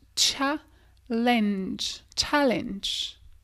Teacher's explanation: Ça se dit challenge. C'est comme si tu avais un TCH.